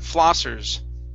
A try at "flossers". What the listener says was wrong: Okay, you're saying flossas. Instead of sa, it's sir. Flossers. Curve the tongue up. Flossers.